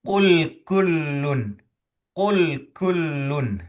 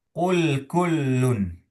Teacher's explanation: Huruf qf itu lebih dalam. Huruf kaf lebih cetek lebih lebih di luar